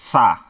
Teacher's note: जब आप सा बोलेंगे तो आपका जीभ जो है तालु से टकराएगी